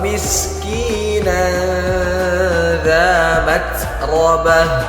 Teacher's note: huruf ta ketika harakat sukun maka harus kedengaran desisnya. Maksudnya desis adalah udara yang mengalir.